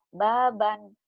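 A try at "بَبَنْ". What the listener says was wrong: Nggak ada yang panjang. Baban, jangan panjang. Baban.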